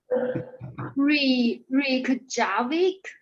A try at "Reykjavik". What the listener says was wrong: Yeah, it's close. You don't say the K in the middle, so just Reykjavik or Reykjavik.